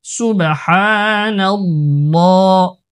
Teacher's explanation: আল্লাহ শব্দের লাম পুর হবে, মোটা হবে